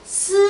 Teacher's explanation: 공기의 입장에서는 이빨 사이로 이렇게 비벼서 나오잖아. 그래서 마찰을 한다 그래서 마찰음.